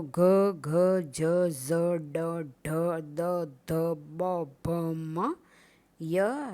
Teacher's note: ઘોષ વ્યંજનના ઉચ્ચારણમાં કોમળતાનો રણકો હોય છે.